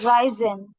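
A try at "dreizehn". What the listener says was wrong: হ্যাঁ, ড্রাই, এটা সেন এর উচ্চারণ হয়, সেন। 10 যেটা না, ওটার উচ্চারণ হবে সেন।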